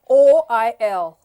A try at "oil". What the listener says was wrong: It is oil not oil. It's two syllables again.